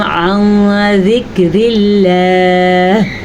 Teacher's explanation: لفظ اللہ کو باریک پڑھنا ہے کیونکہ پچھلے حرف کے نیچے زیر ہے